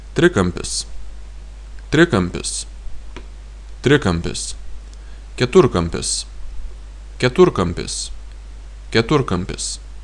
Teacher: If you are talking about the shape, you want to say triangle, you put the stress on the last vowel of the first root.